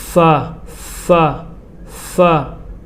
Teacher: فا کا صحیح مخرج یہ ہے کہ فا کا صحیح مخرج یہ ہے کہ اوپر والے دانتوں کا کنارہ اور نیچے کا ہونٹ کا پیٹ۔